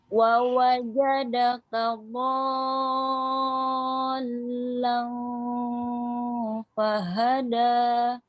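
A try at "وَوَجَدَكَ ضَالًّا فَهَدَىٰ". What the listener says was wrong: Jangan ha, kedengeran tuh. Bacanya ha. Samping ha. Fahada ha. Lihat saya nih mulutnya. Ha. Jangan ha. Fahada ha. Jangan terlalu ke dalam.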